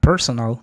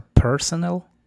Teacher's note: La primera, personal, con acento en la primera E